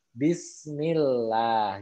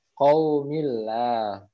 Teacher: Nah, sedangkan kalau misalkan pada asma Allah sebelumnya didahului oleh huruf yang berharokat kasroh, maka lamnya menjadi tipis